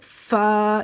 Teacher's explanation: فا میں ہمس ہوگا، یعنی کہ ہواؤں کی شور کی آواز آئے گی، فا یعنی ہمارے اوپر والے دانت نیچے والے دانتوں کی، ہماری جو اوپر کے جو دانت ہیں نیچے والے ہونٹوں کے شکم میں لگیں گے